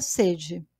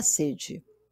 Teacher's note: a palavra sede deve ser pronunciada com a vogal fechada na primeira sílaba